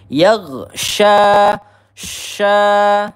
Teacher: Hati-hati di sini makhraj huruf sya ya. Ujung lidah kita hampir bertemu dengan gigi seri yang bawah. Kemudian ada udara menyebar di dalam mulut kita.